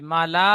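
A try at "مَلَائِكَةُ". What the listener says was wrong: মা টান হয়ে যাচ্ছে, মা টান হবে না জি।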